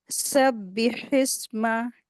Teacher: बा के नीचे कसरा है यानी जेर है, इसको जल्दी पढ़ेंगे, जरा खींचेंगे भी नहीं इसको। जल्दी पढ़ा जाता है हरकत को।